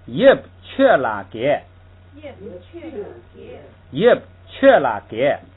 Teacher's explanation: 这个本来应该读k是吧？应该这个不送气。为什么送气呢？